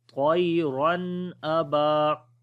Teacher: دو زبروں یعنی تنوین کے بعد حمزہ آ گیا، تو یہاں پر اظہار ہوگا، نون کی آواز ظاہر کر کے پڑھیں گے